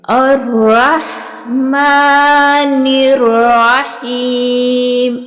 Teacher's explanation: را کو پر اور موٹا ادا کریں گے، ہا کے ساتھ ملاتے ہوئے، ہا کے اوپر جزم ہے، را کو پر اور موٹا اور ساتھ ہا کو ملا کے پڑھیں گے۔ الرح، رح، میم کے اوپر کھڑا زبر ہے، اس کو ایک الف کی مقدار لمبا کر کے کھینچ کے پڑھیں گے۔ الرحمن الرحیم، اسی طرح سے جیسے میم کے اوپر کھڑا زبر ہے، نون کے نیچے زیر ہے، اس نون کو را کے ساتھ ملاتے ہوئے را کو سختی کے ساتھ پر اور موٹا کر کے پڑھیں گے۔